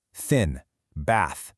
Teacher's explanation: No sound from your throat, just air.